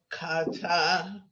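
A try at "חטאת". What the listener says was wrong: There's no dot in there, so it's a ha.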